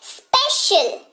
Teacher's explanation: यहाँ पर तालव्य श जैसा हो रहा है